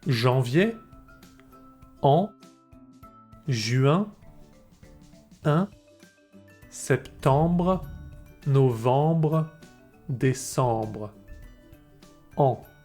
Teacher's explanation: Be careful with these nasal sounds, because we're not supposed to hear the N in en, janvier, and un, juin